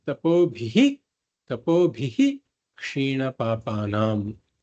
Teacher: So when the kakara is followed by the shakara, that is, it becomes a ksha. Then whenever there's a visarga followed by a ksha, It is a full visarga.